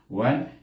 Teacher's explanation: terus mati dengan lidah kita ternaik kepada mahras nun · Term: izhar